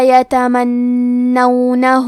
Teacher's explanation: کلمت یتمنونہ میں نون پہ تشدید ہے، لہذا ہمیں 2 حرف کے برابر نون کو پڑھنا ہے۔ یہاں نون پہ زبر ہے تو ہم زبر کو ظاہر کریں گے، ہاں پہ الٹا پیش ہے اور اس پہ مد کا علامہ ہے۔